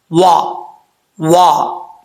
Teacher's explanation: واو کو پڑھتے وقت ہونٹ گول کریں گے، اگر ہونٹ گول نہیں ہوں گے تو سمجھ لیجیے گا کہ یہ اپنے مخرج سے ادا صحیح طریقے سے نہیں ہوا۔